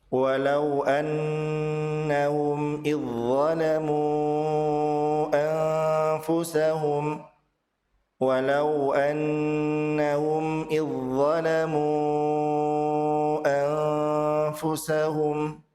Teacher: Persamaan makhrajnya adalah ujung lidah dan ujung gigi atas. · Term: idgham mutajanisan